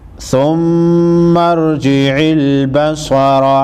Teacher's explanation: میم مشدد پر غنہ ہوگا، سختی کے ساتھ ادا کریں گے